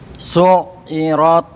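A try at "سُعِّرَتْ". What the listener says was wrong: Agak tekan lagi ya Pak. Pernah saya sampaikan ya Pak Ibu ya, cara ngelatihnya ya. Ini dari seorang syekh ya, tapi agak jorok ya. Jadi minum gitu kan. Nanti minum airnya nanti digerak-gerakin di sini di tenggorokan. Itulah letaknya makhrajnya huruf ain.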